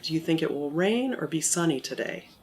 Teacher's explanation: And so we talk about that and how they need to make sure that their intonation is going back down at the end of a statement, or even an open-ended question, like, do you think it will rain or be sunny today? So that's not a yes-no question, so it goes down at the end.